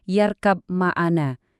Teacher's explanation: Pas huruf ba sukun ketemu mim di yarkab maana, kamu harus ngilangin letupan huruf banya. Bibir kamu tahan tetap rapat. Terus dorong udaranya naik ke rongga hidung buat nyiptain dengung mim yang tebal. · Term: ghunah